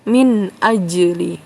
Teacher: dibaca jelas ya tidak berdengung tidak dipantul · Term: Idhar